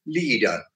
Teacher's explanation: their stress is on the syllable with the long vowel sound